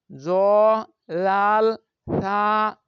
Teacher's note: জিহ্বার আগা সামনের উপরের দুই দাঁতের আগার সঙ্গে লাগিয়ে জ লাল থা উচ্চারিত হয়।